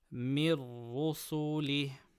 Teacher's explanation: Nun Sakina before Ra, Idghām without Ghunnah. Ra with Dhamma, full mouth.